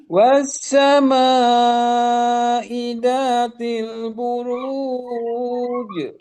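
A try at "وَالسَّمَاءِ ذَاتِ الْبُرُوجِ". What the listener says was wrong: Mantap, bagus.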